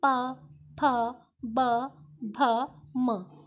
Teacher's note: ओष्ठ व्यंजन होते हैं जब हम इन व्यंजनों का उच्चारण करते हैं तो हमारी जीवा किसी स्थान को स्पर्श नहीं करती, दोनों होंठ एक दूसरे के साथ स्पर्श करते हैं